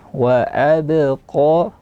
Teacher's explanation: tipiskan ba, tebalkan qaf, isti'lakan qaf. Wa abqa, tekanan suara ke langit mulut, isti'la.